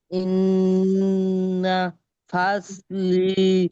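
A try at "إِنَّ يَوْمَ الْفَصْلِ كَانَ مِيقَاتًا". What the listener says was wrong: ইয়াউমাল বলেন, ইয়াউমা বাদ গেছে।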